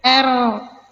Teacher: Nah, kita baca R masuk sempurna ke huruf ro. Huruf lam syamsiah tidak terdengar suaranya. Dia seakan-akan lenyap dihilangkan ya. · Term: idgham kamil